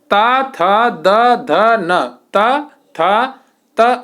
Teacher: देखना आपकी जीभ दांत से लड़ेगी। जीभ जो आपकी है ये ऊपर वाले दांत से लड़ेगी।